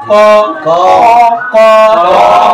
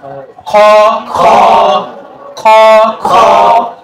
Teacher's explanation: মহাপ্রাণ বর্ণগুলো উচ্চারণ হবে মুখের ভিতর থেকে এবং শ্বাসও বের হবে।